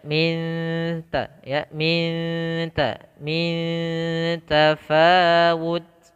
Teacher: kita bukan baca dengan min tafawut tapi disamarkan dengan dengung. Lebih mudahnya untuk awalan yaitu dengan eng gitu ya, minta, tapi pada dasarnya ikhfa-nya adalah kita samarkan ke huruf ta yang betulnya.